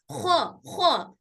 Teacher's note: खा भी हमारे मुंह के आखिरी वाला हिस्से, ऊपरी वाले हिस्से से अदा हो रहा, और उसी के करीब से कौफ भी अदा हो रहा, दोनों भी बहुत पास पास, दोनों भी अब बहुत करीब करीब से अदा हो रहे, दोनों के घर बहुत करीब है एक दूसरे से, लेकिन दोनों की फैमिलीज अलग अलग हैं।